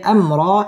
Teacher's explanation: মিম সাকিনে ইজহারে খাস গুন্নাহ ছাড়া পড়তে হবে